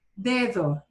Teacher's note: it's a soft kind of th sound in the second d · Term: soft d